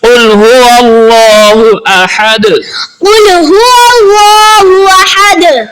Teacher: اللہ کے لام سے پہلے زبر ہے، اس لیے اللہ کے لام کو پر پڑھا جائے گا۔ احد، ہا کو ہا نہیں بنانا، احد پڑھنا ہے۔